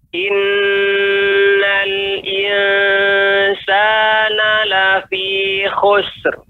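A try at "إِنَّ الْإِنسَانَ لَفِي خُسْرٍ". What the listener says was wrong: Sinnya juga lebih ditambah lagi ya, sehingga agar tidak terkesan sinnya itu dikolkolahkan khusr. Nah, itu kolkolah namanya. Khusr. Sinnya dipantulkan dan sin bukan huruf kolkolah. Maka caranya pengucapannya khusr. In lafi khusr. Lafi khusr.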